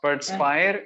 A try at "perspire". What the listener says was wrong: Pronunciation. So perspire. The R don't emphasize the R. Perspire. The first R. Yeah, perspire. Hmm. Yeah, perspire.